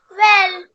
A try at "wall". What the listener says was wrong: Wall. Well नहीं है वो, wall है ना? WA है तो वॉ साउंड होता है, WE है तो वे साउंड होता है।